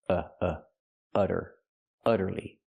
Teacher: the u making a short uh sound like cup and up because the u is before a double consonant.